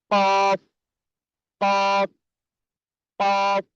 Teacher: প্রথমে জিহ্বার গোড়ার উপরে তালুর সঙ্গে লাগাতে হবে, ঠিক আছে?